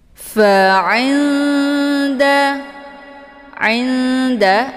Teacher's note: lidah Dal juga posisinya ujung lidah maka untuk Ikfa aqrab ini kalau dibandingkan tingkat kesamaran dan dengungan itu lebih ke samar ya dengungnya Ada cuman sedikit karena Nun dengan Dal itu makhrajnya saling berdekatan cara bacanya nunnya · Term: Ikhfa aqrab